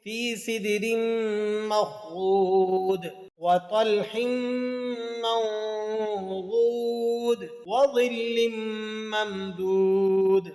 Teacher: چاروں آیات کا آخری لفظ حروف قلقلہ کا ہے، ان کو ادا کرتے وقت آخر میں قلقلہ بھی ادا کرنا ہے